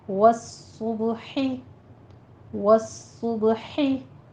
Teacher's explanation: सौद के ऊपर सीटी की आवाज़ लेकर आएंगे और तशदीद है, सख्ती करनी है आपने। सौद हुरूफ मुस्तालिया में से है, इसको पुर भी पढ़ना है और आगे बा पर कलकला करना है।